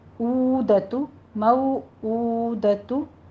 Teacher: मऊ वावलीन है, होंठों को ना तमाम गोल करके अदा करना है। और ऊ में हमज़ा है, इसको उल्टा पेश ऊपर 2 ही काउंट करने हैं।